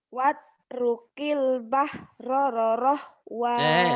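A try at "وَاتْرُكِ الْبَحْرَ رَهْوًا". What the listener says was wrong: Roroh, kok banyakan rorohnya? Pokoknya Bahroroh. Kenapa jadi Bahroroh, Wak? Rohnya kan cuma dua. kebanyakan rohnya.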